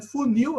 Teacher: a sílaba tônica é nil